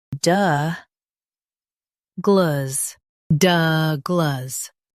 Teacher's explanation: Stress duh and keep gluhs light.